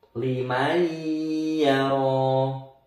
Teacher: nun sukun ini masuk ke huruf setelahnya sambil dengung. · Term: idgham bil gunnah